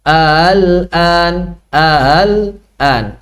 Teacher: Tashil adalah mengucapkan hamzah yang kedua dengan makhraj dan sifat yang berada di antara hamzah dengan mad